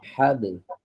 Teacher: Nah, jadi nggak boleh dilibatkan tenggorokannya. Fokus di 2 bibir saja. 2 bibir, kemudian dilepas. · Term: qalqalah sugro